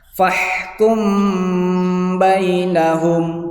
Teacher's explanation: Jadi di situ dibacanya samar ikhfa. Jadi mimnya itu mim matinya dibacanya samar. Boleh di situ berdengung, ya kan, di situ membacanya berdengung.